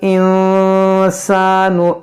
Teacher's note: नून साकिन के बाद सीन है, यहाँ पर इख्फ़ा होगा